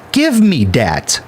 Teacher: My mother couldn't pronounce the th sound, so when she said give me that, it sounded like give me dat.